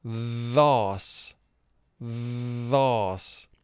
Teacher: Now in this word, TH is representing its second sound. The vocal cords vibrate to create this sound, whereas in the first sound for TH, the vocal cords don't. So in this word, TH is representing the sound th.